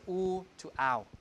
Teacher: So hoon in Old English has become hound due to the GVS, right? Oo to ow